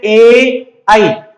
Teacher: ए का जो उच्चारण स्थान है वो कंठ तालु है, आई का उच्चारण स्थान है वो भी कंठ तालु है